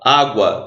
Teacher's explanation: Água, mesma coisa. Você tem o U, que é semivogal, o A, que é a vogal. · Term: ditongo crescente